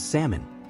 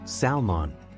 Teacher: in Salmon the L is silent